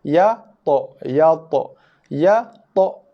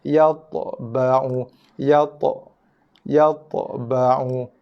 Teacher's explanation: Ya satu huruf, satu makhraj, satu bunyi. To, bunyi to baris mati beserta bunyi lantunan dia, qalqalah dia.